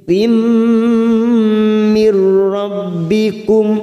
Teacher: Ila maghfiratim huruf gha sukun hati-hati jangan memantul kita tahan maghfiratim tim ada tak marbuto yang berharokat kasrah tanwin bertemu mim kita tekan selama 3 ketuk siap masuk pada huruf mim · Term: idgham bi gunnah